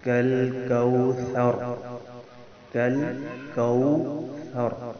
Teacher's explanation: فرق ہونا چاہیے، ثا کو نرمی سے ادا کرنا ہے، ثر، اور را آخر میں پر ہوگی، یعنی را کو ایک دم چھوڑنا نہیں ہے بلکہ پکڑنا ہے پھر چھوڑنا ہے. کل کوثر، کل کوثر.